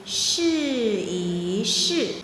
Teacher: notice that e is in the neutral tone